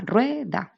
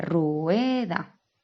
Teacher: Es la separación de un diptongo en 2 sílabas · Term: diéresis